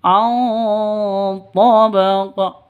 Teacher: Di sini ada nun mati bertemu dengan to. Cara bacanya samar, didengungkan, siap-siap ke huruf to-nya. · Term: ikhfa hakiki